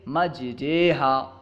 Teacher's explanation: الف کو یا کی طرف اور زبر کو زیر کی طرف مائل کر کے پڑھنا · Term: امالہ